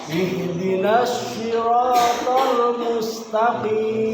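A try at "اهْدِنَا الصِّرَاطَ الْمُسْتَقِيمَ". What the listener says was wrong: Untuk ininya sudah kena ujung lidahnya, tinggal pangkatnya yang belum naik. Jadi bunyinya itu masih belum tebal. Sirotona. Kalau yang bunyinya tebal, pangkatnya naik. Sirotol mustaqim.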